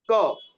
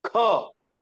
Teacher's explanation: तो उनके उच्चारण में शास्त्र कहते हैं कि जब इनका उच्चारण करना है तो आपको का से ज्यादा ताकत लगानी है, उसकी दूनी ताकत लगानी है ख में।